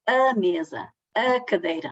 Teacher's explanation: E essas vogais das sílabas átonas integram-se num processo fonológico que caracteriza o português europeu, uma característica peculiar do português europeu. Porque quando o A é átono, pronuncia-se A, semi-fechada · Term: A átono